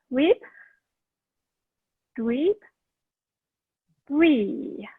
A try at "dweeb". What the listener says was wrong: Dweeb, you could spend a little more time on that E. Dweeb.